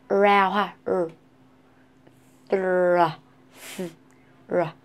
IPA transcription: θr